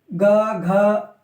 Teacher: तो गले में हमारे ज्यादा वाइब्रेशन होती है थोड़ा सा जोर ज्यादा लगता है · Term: सघोष